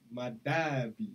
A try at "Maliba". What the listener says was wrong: No, M A L. But it's spelled M A L, and I said Maliba Lodge.